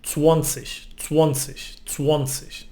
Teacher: In Austria it's softer, and actually they add a little O in the word and they say 20, 20, 20.